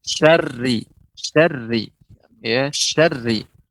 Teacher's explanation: Cuman huruf ra, syarri, syarri, ya, syarri, ya, tidak terlalu banyak getarannya